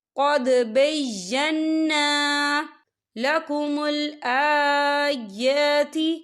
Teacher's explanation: یہاں دیکھیں قد دال ساکن ہے تو یہاں پر قلقلہ ہوگا، اور بینا یہاں نون مشدد ہے تو یہاں پر غنہ بھی ہوگا، اور یہاں پر الف مدہ بھی ہو رہا ہے.